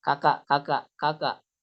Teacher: Adapun dia mengucapkan kaf, tapi dia kaknya itu nggak ada hamesnya.